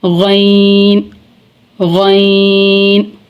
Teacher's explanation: गैन गैन गैन, गैन पुर पढ़ा जाएगा और गैन का मखरज है इब्तदाए हलक यानी हलक का वो हिस्सा जो हमारे मुंह की जानिब है